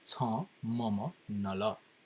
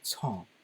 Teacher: that slight nasal sound at the end of cha added to that mild n sound